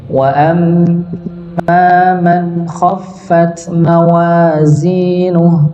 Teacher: huruf mim bertasydid maka ditahan didengungkan